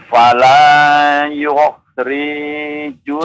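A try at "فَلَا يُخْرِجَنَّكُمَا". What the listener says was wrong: Jangan dipanjangkan, pendek dibaca pendek. Kalau panjang baru dibaca panjang ya. Fala yukhrijannakuma. Yukhrijannakuma.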